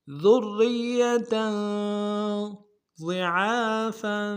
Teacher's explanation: غاد کو موٹا ادا کریں گے، عین کے اوپر کھڑا زبر ہے ایک اختیار میں کھینچیں گے، فا کے اوپر تنوین غنہ کریں گے۔